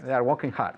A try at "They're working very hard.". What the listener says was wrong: They're working very hard. Not walking. Working, not walking.